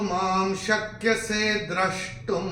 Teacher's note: पहले चरण में माँ के ऊपर अनुस्वार के बाद का अक्षर है श, और अनुस्वार के बाद जब श आएगा तो अनुस्वार का उच्चारण होगा म